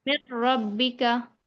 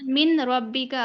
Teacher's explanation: نون ساکن کی جو آواز ہے وہ بالکل ہی ختم ہو جائے گی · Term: ادغام تام